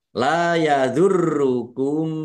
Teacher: Lam fathah alif mad thobi'i panjang dua harakat. R-nya dibaca dobel, ada tasdidnya ditekan dan ditahan biar tampak dobel.